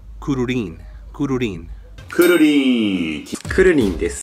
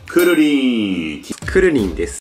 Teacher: With the emphasis on the rin part.